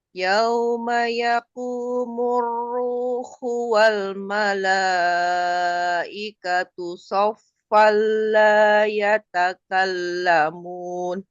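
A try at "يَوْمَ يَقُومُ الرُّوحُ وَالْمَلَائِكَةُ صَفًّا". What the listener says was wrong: Oke tebal sempurnakan. Sh tebal ya. Sh sa Sof Sof. Kemudian ruhu tajam lagi sedikit lagi.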